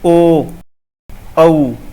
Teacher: दोनों का उच्चारण ओष्ठ्य और कंठ से होता है।